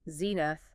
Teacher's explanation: 2 syllables. Stress on the first.